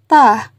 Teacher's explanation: Contoh, ketika kita melafalkan huruf ta, maka dikatakan fasih ketika kita mampu menyentuhkan ujung lisan dengan tempat tumbuhnya dua gigi seri bagian atas, atau sederhananya ujung lidah disentuhkan dengan gusi-gusi seri atas